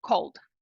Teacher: do som L, você já pula imediatamente para o som D